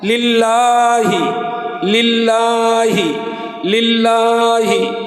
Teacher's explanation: লিল্লাহি লামে এক আলিফ টানা আছে